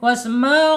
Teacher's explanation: ainnya ada di tengah-tengah tenggorongan. Tapi secara makhraj karena menghadapi huruf wau ini aljaub aljaub ya wasmau ya tidak boleh masuk hidung ya harus ditenggorokkan.